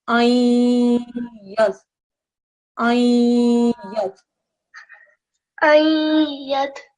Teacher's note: There's a noon sakin, and when you see a noon sakin and a ya mushaddad straight afterwards, there's partial assimilation